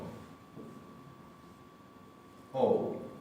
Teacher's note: Hay una leve diferencia de tono que es como si le pusiéramos una pequeña U. En el caso de la O con tilde, directamente es OU. Es todo un diptongo.